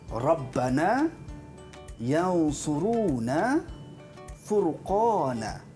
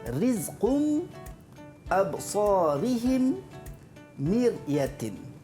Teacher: Pada pendapat saya rasa bahagian satu tadi, ra dia bunyi lain sikit dengan bahagian dua. Dia yang pertama tu bunyi tebal sikit. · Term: ra' tafkhim